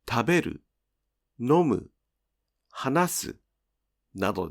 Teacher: These verbs have a pitch drop on the last mora of the dictionary form. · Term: verbs that drop